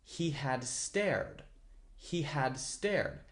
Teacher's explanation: I put he had really close together like it is one word